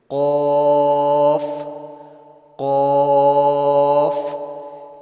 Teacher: قاف کو بھی موٹا پڑھیں گے